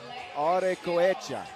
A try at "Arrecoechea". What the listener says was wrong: And you gotta really roll the R. Arre.